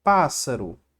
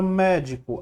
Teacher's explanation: a antepenúltima né então a gente vai acentuar a palavra médico a sílaba mais forte é a antepenúltima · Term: proparoxítona